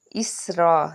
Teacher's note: اسرا، سین حرف صفیریہ ہے، جب اس کو ادا کریں گے سیٹی کی آواز آنی چاہیے۔ را کو پر پڑھیں گے کیونکہ اس کے اوپر زبر ہے